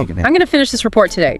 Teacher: downward slide on today clear intention